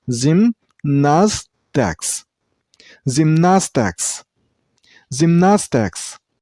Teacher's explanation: And while you pronounce the word, stress on the middle syllable. I mean on nas sound.